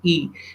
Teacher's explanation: So if I produce a sound E, the you can say E, the distance between the palate and the tongue is very less. That's why it is close.